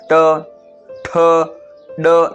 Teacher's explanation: ट, ठ, ड, जबान गोल हो रही है